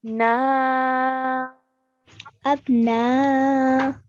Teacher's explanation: for four counts at least so four to six counts so we're going to stretch the sound of the na for four counts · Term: madulkabir, Madulkabir